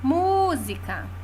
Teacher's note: a sílaba tônica é mu e é a antepenúltima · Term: proparoxítona